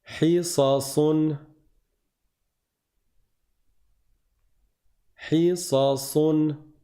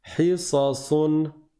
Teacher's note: Levez bien la langue à l'arrière quand vous prononcez le sad pour la différencier du sin qui est léger, qui est aminci.